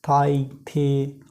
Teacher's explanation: This sound is made with the tongue, tip और blade और अपर front teeth. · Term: डेंटल